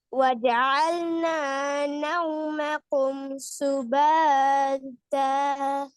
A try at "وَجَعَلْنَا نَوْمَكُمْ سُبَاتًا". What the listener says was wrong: இப்பதானே சொன்ன சுபத். என்ன இது ஒவ்வொரு எழுத்தாவது எப்படி ஓதுறது? ஒவ்வொரு எழுத்தா ஓதப்படாது, மொத்தமா சேர்த்து ராகம் எடுத்து ஓதணும்.